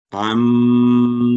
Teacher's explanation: گنا کرتے ہوئے, یہاں 2 سیکنڈ آواز لمبی بھی ہوگی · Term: میم مشدد